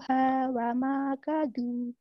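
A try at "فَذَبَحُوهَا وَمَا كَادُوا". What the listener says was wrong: Kanya panjang. Kanya panjang, Bu. Ayo lagi.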